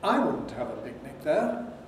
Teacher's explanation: I is accented, in fact, it's the nucleus. And it's a four rise on I.